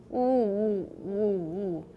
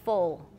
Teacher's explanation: If you make a very, very back ooh, you'll get a dark L as in full, full, with no alveolar contact